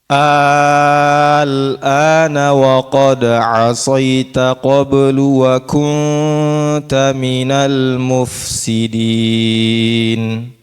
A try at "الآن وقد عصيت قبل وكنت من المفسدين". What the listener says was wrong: Coba ditipiskan lagi. Wa kunta, wa kunta.